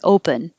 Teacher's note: the p-e-n is not stressed so that makes it more likely to change to a pin or an uh pun